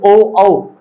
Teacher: कंठ औष्ठवी ध्वनि कौन सी हमारी ओ औ, यानी ओ औ जब हम बोलते हैं ओ औ तो कंठ भी मदद करता है और हमारे होठ भी मदद करते हैं